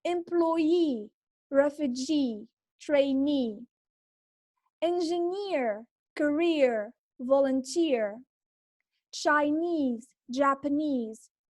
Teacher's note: the stress is on the suffix itself